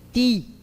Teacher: Tem a pronúncia com a ponta da língua mantendo o mesmo movimento mesmo diante do i